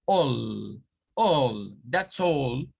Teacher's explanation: Una A antes de una L nos va a generar el sonido O más L